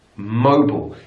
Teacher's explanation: So the stress is also on the first syllable, but it's bull, not aisle